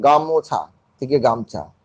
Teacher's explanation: গামোছা থেকে গামছা, ওকাটা লোপ পাচ্ছে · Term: স্বরলোপ